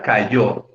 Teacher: la sílaba tónica es la última, yo, y está marcada además con un acento ortográfico, o sea, con una tilde.